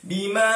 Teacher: Baca 4 ataupun 5 harkat. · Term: mad jaiz munfasil